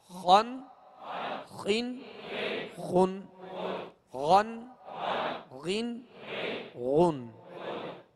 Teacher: اب یہ دونوں حروف حرف خا اور حرف غین، یہ دونوں حروف پر یعنی موٹا پڑھیں گے ان کو، اس لیے کہ یہ حروف مستعلیہ میں سے ہیں